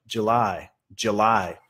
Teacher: Pero diciéndola en una oración, vamos a reducir el ju a ya, July, July. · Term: sonido schwa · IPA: |ˌdʒuːˈlaɪ|